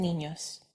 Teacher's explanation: an N made using the middle of your tongue against the roof of your mouth